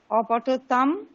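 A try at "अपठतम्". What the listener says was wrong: না অপঠতম না, অপঠতম, মকারের নিচে হলন্ত আছে তো, অপঠতম।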